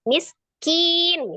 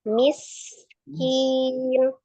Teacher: Sin itu sifatnya ada asofir, desis. Ada gitu ya, desisan. Kemudian dia juga alhams, nafas mengalir. Kemudian dia juga roghah, suaranya mengalir.